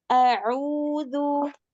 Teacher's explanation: Kemudian ainnya ditipiskan lagi karena ain itu selamanya tipis ya.